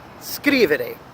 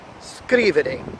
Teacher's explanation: the emphasis falls at the beginning of the word all right the first syllable of the three